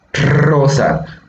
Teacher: la lengua vibra, por eso es vibrante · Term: vibrantes